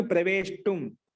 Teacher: ప్రచ్ఛ ధాతుకి ప్రష్టుం మూర్ధన్య షకారం వచ్చింది మధ్యలో